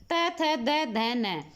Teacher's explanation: दंत्य कौन से होते हैं, जो दांत पर टच हो जीभ